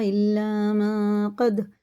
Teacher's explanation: نون ساکن ہے، دال میں قلقلہ ہے، سخت پڑھیں گے